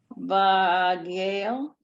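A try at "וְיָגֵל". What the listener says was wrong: V'yagel. That's the yud with the a again.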